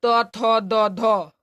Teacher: त थ द ध दंत से निकलता है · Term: दंत वर्ण